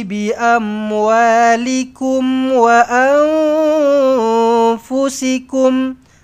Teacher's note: Dengungkan nun kosong bertemu dengan fa. Ikhfa hakiki.